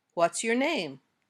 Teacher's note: with question words like who what where when why and how usually have falling intonation your voice goes down at the end of the question like this